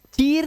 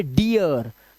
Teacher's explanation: double E के बाद अगर आर आया तो साउंड ही चेंज कर दिया इसने इसको ई नहीं करा, ईया कर दिया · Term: ईया का आवाज